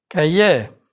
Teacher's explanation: R is not pronounced in words ending in IER, like Cahier.